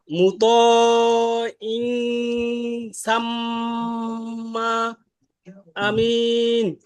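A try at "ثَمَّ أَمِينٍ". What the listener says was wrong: শুনেন ভাই, সাম্মার ক্ষেত্রে দুই ঠোঁট লাগবে না। দুই ঠোঁট যখন লাগিয়ে ফেলবেন তখন এটা উচ্চারণটা আসবে না। দেখেন মুতাইন সাম সাম সাম সাম না, সাম দেরি করে না ভাই, তাড়াতাড়ি, কিন্তু সাম্মা সাম্মা নরম, সাম্মা বলেন।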